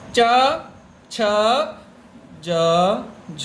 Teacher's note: तालू आपकी जो टंग मुड़ के चा बोलते हैं और ऊपर आपकी जो जीभ है चपटी होकर के आपके दांतों के ऊपर वाले दांतों के पीछे वाले भाग में जब चिपकती है उस जगह को तालू बोलते हैं